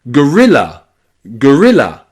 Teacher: the O there in gorilla is not stressed.